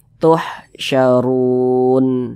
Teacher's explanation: kalau berwakaf tepat di huruf nun kita baca tuhsyarun Jangan dibaca tuhsyaruna jangan tapi huruf nun kita sukunkan kita baca